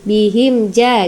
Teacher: mim mati bertemu dengan ja izhar syafawi bacanya jelas